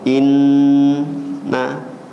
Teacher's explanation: kalau keadaan mim dan Nun ini ditasdidkan itu level tertinggi gunahnya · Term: ghunah